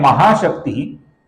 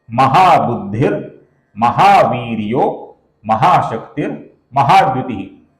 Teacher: शक्ति के विसर्ग के आगे म आने के कारण इधर र हुआ है